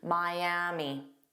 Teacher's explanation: So, notice we have three sounds. My m is the stress sound and then a long e.